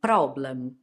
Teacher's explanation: If you are Italian, it could be that you're making your Rs very strong